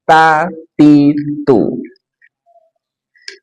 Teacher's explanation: ujung lidah dari permukaan atasnya bertemu dengan gusi gigi seri atas.